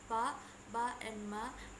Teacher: For example, the sound pa, ba, and ma, the organs use the upper lips and lower lips. When the upper lip and lower lip are pressed, they will emit or produce the sound pa, ba, and ma.